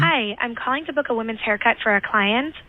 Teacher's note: that's that with the up talking and everything and the gravelly voice and the perfectly perfectly timed um that's the assistant yes a little bit of vocal fry' yeah